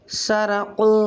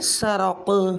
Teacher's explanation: قلقلہ کبریٰ یعنی نمبر 2 قلقلہ کبریٰ یعنی وقف کی صورت میں ہونے والا قلقلہ، سین زبر سا، رو زبر رو، قاف زبر قو، سرق، آگے وقف سرق۔ حالت وقف میں قاف کا زبر ختم ہو جائے گا، قاف ساکن ہو جائے گا۔